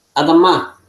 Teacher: cuando tenemos dos kamat, la segunda se va a acentuar más fuerte. Por eso se acentúa más fuerte la última sílaba.